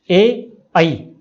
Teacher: ए ऐ इन दोनों का उच्चारण कंठ तालु रहेगा, कंठ भी तालु भी, इसलिए इनको कंठ तालव्य स्वर कहा जाता है।